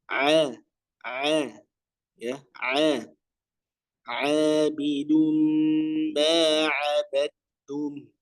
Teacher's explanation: ainnya tentu ya tepatkan lagi di makhrajnya yaitu pada ya tengah tenggorokannya